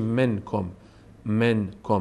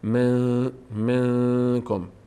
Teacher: از بینی تلفظ می‌کنیم نمیگیم منکم من کم میگیم من منکم زبان اصلاً به مخرج نون نمیره خود بهخود صدا از بینی گوید انگار که این نون از داخل بینی ادا میشه من منکم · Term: اخفا